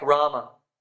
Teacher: a word like Rama Ram has two A's in it but the first a is long ra and the second a is short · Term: Matra